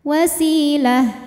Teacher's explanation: Si mad tabi'i dhahiri karena ada ya sukun didahului kasrah, maka sin panjang 2 harokat. Wasilah. Nah ini tak marbutoh jadi hak gede ya, hak sukun kalau berhenti. · karena ada Ya Sukun didahului kasrah maka Sin panjang dua harakat